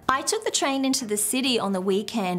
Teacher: instead use the downswing so the downswing is obviously the opposite it's a downward intonation at the end of a sentence